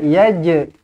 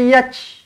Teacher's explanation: Jadinya kenalah bunyi lantunan tu sebab dia qalqalah. Jangan keluarkan angin je, jangan. Kalau angin tu hamas, yang jim ni bukan hamas. Jim ni qalqalah.